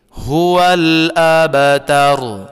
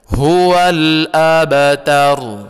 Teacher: Yang dipantulkan atau qalqalah di surah Al-Kautsar ini hanya ada 1, yakninya pada ayat 3, yaitu huruf ba sukun, maka dia dipantulkan. Jadi huruf ba mati atau sukun, maka dia dipantulkan.